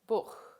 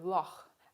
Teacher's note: german has a voiceless velar fricative as in the word buch